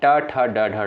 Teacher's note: ये सभी आपके जो है मूर्धा से उच्चारित होने वाले वर्ण होते हैं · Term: मूर्धन्य